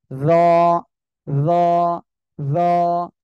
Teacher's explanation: জিহ্বার আগা, এই সামনের উপরে দুই দাঁতের আগার সঙ্গে লাগান, সবাই একসাথে লাগান তো, লাগে উচ্চারণ করেন, র, র, র, ঠিক আছে?